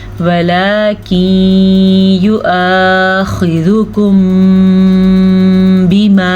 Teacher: वलाकिन युआखिज़ुकुम बिमा, आपने देखा मैंने यहाँ पे दोनों होंठ बंद करके गुन्ना किया है क्योंकि तजवीद की रो से यहाँ पे इख्फ़ा शफ़ी का कायदा हो रहा है। मीम साकिन के बाद हरफ बा आ जाए तो दोनों होंठों को बंद करके गुन्ने के साथ अदा करते हैं। इस कायदे को इख्फ़ा शफ़ी कहते हैं।